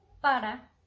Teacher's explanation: we use just one r and the sound is really soft when is between two vowels